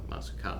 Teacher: it's actually also very easy when someone's speaking to recognize a question because of the rising intonation at the end